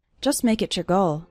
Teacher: The T at the end of the word just is barely pronounced